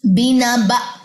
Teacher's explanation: اب یہاں پہ تھوڑی سی ساؤنڈ ایسے آئی ہے جب حمزہ کے نیچے دونوں زیریں ڈراپ ہوئی ہیں تو حمزہ پہ جزم آ گئی اور حمزہ جزم جھٹکا لیتا ہے